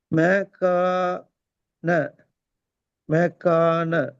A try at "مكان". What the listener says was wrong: மே கான மீ நீட்டப்படாதே. மே நீட்ட இல்லாதே. அதான் பிழை. இங்க மே நீட்டீங்களே. மே மே அல்ல அது மே. மெக்கான மே கான மே நீட்டப்படுது. ஒவ்வொரு எழுத்தையும் தனித்தனியா உச்சரிக்கும். மெ கே ந மெக்கான.